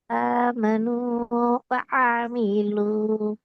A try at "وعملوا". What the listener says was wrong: வ வ என்று வரக்கூடாது. وعملوا وعملوا وعملوا.